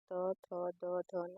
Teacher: दांत प्लस जीभ का अग्र भाग। जिन ध्वनियों के उच्चालन में जीभ का अग्र भाग हमारे ऊपर के दांतों को स्पर्श करता है उन्हें दंतीय व्यंजन कहते हैं।